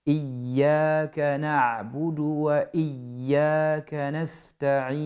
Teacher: la lettre ya est mushaddada, elle est doublée. Donc il faut bien appuyer le ya, il ne faut pas laisser traîner.